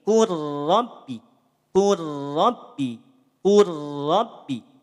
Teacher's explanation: lamnya tidak dibaca jelas lamnya dileburkan · Leburkan saja huruf lam sukun pada huruf ro, sehingga bunyinya tidak dibaca kul rabbi, tapi kur rabbi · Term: idgham mutaqaribain